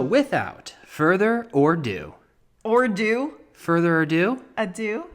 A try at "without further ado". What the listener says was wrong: it's not or do, it's ado. Maybe it was a mispronunciation. It sounded like further or do. Ado.